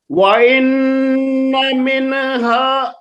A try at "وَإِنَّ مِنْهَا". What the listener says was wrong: نو مینا نہیں، وہی غلطی ہے نا. وہی غلطی ہے، نون میں آپ حرکت کر دیتے ہیں. وَإِنَّ مِنْهَا